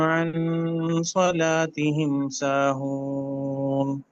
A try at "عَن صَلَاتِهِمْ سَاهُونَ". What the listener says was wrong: تھوڑا ساتھ کو موٹا کریں. عن صلاة.